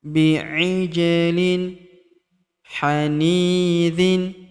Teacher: Huruf ja berharokat sukun kita pantulkan atau kita qalqalahkan.